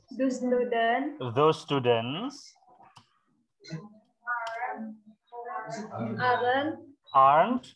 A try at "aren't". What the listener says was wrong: bukan aren ya, aren't.